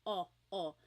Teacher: Your tongue gets kind of pushed back and down a little bit and the inside of your mouth is open and wide.